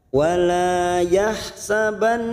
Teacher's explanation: nun yang bertasdid gunnah musaddadah kita tekan selama 3 harakat.